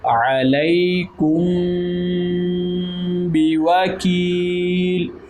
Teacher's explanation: یا مدہ، اس لیے اس کو ایک الف کی مقدار کے برابر اس کو ہم لمبا بھی کریں گے